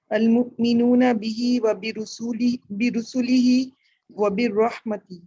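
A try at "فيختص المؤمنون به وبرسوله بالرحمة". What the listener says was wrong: دیکھیں دونوں دفعہ آپ نے وہی مسٹیک کی, اس کو غور سے دیکھیں. واو جس جگہ آ رہا ہے وہ وبرسول ہی ہے, اس کے بعد واو نہیں آ رہا. وبرسول ہی بالرحمہ.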